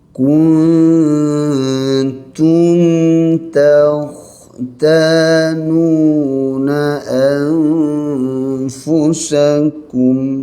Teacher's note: Nun mati dengan ta dengung panjang ikhfa hakiki, mim mati dengan ta dengung pendek izhar syafawi.